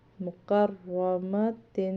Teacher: را کو موٹا پڑھیں گے، پر پڑھیں گے کیونکہ را کے اوپر زبر آ رہی ہے